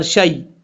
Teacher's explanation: شین کے بعد جو یا ہے یہ یا لین ہے، اس کو لمبا نہیں کریں گے